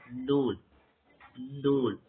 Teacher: மேல் வரிசை நடுப்பக்கோட ஈறு இருக்குதே மேல அந்த பல்லு கொஞ்சம் மேல அதுல நூல் அப்படி படுற மாதிரி இருக்கணும்.